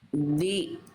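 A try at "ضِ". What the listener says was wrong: Nah itu masih di. Nah, artinya bli. Nanti harus dilatih pangkal lidahnya itu masih di. Bukan di, tapi bli. Nah, Bunda rasakan lidah dalam Bunda yang dalam nih didorong ke dalam, angkat ke atas. Kayak lagi mau nelen sesuatu. Bli.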